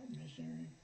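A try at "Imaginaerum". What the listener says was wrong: No, there's no E. It's Imaginarum.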